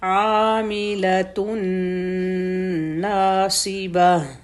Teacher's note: عین کا مخرج گلے کے بالکل سینٹر سے